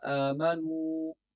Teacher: آمنو کی واو کو لمبا کرنا ہے کیونکہ واو ساکن سے پہلے پیش ہے اور یہاں پر واو مدہ ہے۔